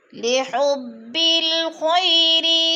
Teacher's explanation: خو موٹے حروف میں سے ہے، اور خی پہ یا لین ہے